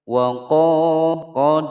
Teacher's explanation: dibaca panjang dua ketukan sebab ada alif sebelumnya fathah. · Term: mad tabi'i